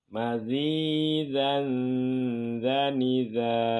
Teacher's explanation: Ini jangan zanza, tapi ditahan suara di sini. Ini ikhfa, membunyikan suara dengan dengung samar.